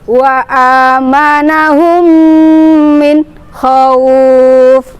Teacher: huruf mim sukunnya dimasukkan ke dalam huruf mim hidup dengan mendengung selama 2-2,5 ketukan